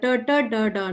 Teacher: the tip of the tongue is rolled back and it touches 3, position 3. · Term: murdhanya